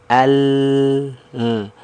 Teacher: dia membelok dari sisi kiri dan kanan lidah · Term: inhiraf